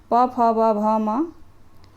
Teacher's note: व्यंजन प फ व म जो है ओस्ट व्यंजन कहलाते हैं इनके उच्चारण में जो है आप लोगों ने देखा होगा होठ जो है परस्पर मिलते रहते हैं